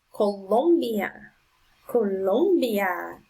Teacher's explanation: the strongest sound is on the second syllable